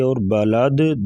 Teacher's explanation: دال ساکن ہوگی وقفاً، تو یہاں پر قلقلہ کریں گے